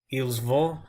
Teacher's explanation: you don't really hear the T in ils vont when I pronounce it